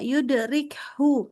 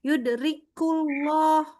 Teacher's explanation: Bersih banget ya, rik keluarinnya udaranya. Karena sekali kita enggak bersih itu keluar jadi bunyinya bukan hu tapi jadi ku.